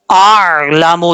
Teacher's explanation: اور آئین جو ہے وہ نارمل طریقے سے پڑھا جاتا ہے، اس لیے ہم حمزہ کو آئین کے ساتھ کنیکٹ کریں گے. کنیکٹ کرتے ہوئے حمزہ کو سختی سے پڑھیں گے، آئین کو نارمل طریقے سے